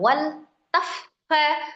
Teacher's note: fa-nya tasdid. Masukkan di sifatul hurufnya, ada al-hamsnya, ada roghahnya